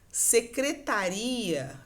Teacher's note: esse ia é um hiato, né? São duas vogais que se separam quando a gente for separar o som